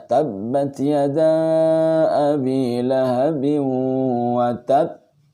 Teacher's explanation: Kemudian sebagian besar permukaan lidah dan langit-langit terbuka tidak bertemu. Keluarnya lancar, ringan, memantulkan suara qalqalah.